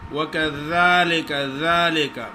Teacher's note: وَكَذَلِكَ ذَلِكَ زال کا مخرج ہے اوپر والے دانتوں کے نوکوں پہ زبان کی نوک لگائیں اور زال باریک ہی پڑی جاتی ہے